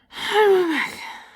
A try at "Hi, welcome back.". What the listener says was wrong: You did not get the syllables in there. I know what you were trying to do, but you didn't get them in there.